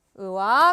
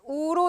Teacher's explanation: 고 그대로 있고요. 후설 그대로 조건 갖춰졌습니다. 무엇만 바뀌었나요? 평순에서 원순으로 바뀌었습니다.